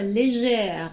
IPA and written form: leʒεr (légère)